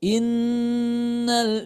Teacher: ketika kita menyamarkan suara nun sukun ini ujung lidah kita jangan dulu ditempelkan ke langit-langitnya maka direnggangkan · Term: ikhfa Hakiki